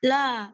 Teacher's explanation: La ini ada mat tabi'i atau mat asli, panjangnya 2 harokat.